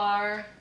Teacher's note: it's the ah as in father and then the schwa with roticity